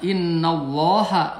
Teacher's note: lohnya tafkhim dibaca tebal